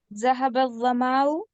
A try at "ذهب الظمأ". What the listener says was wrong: ظمأ، ذو کو پر کریں. ظمأ.